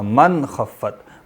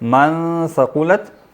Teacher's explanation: خا جب آتا تو وہاں پہ اظہار ہوتا ہے، اخفا نہیں ہوتا